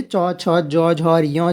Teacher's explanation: तालव्य जो है ये तालु से जीभ टकराती है